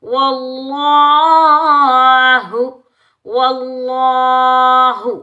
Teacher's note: لفظ اللہ سے پہلے والے ورڈ پر واو پر زبر آنے کی وجہ سے لفظ اللہ کو ہم موٹا پڑھیں گے